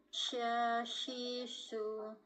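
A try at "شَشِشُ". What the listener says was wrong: Oh, sedikit kurang mecucu, kurang bulat bibirnya, yang su. Syashisu. Nah, su bukan su. Nah, kurang sedikit, Mbak.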